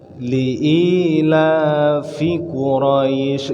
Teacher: Bukan il tapi ila, bukan illa ya. I panjang.